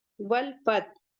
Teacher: حمزۃ الوصل کو نہیں پڑھیں گے، لام کو پڑھیں گے کیونکہ یہاں حروف قمری کا قاعدہ ہو رہا ہے۔ تا کو جلدی پڑھیں گے، ہا کو ہا کے مخرج سے ادا کریں گے، وسط الحلق سے ہے، اور اسے سکون دے دیں گے۔